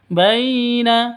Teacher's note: Lin lentur lemas tidak boleh disentak tidak boleh didengungkan